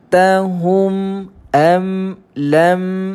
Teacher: Kita baca tanpa kita mendengungkan atau melirik panjang dia. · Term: izhar syafawi